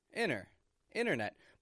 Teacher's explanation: a stop t on the ending internet these are both different T sounds that I have spoken